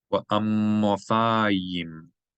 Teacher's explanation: Geminate the mim, elongate the consonant sound of the mim, and pronounce the yud as a y plus the e vowel, hiri.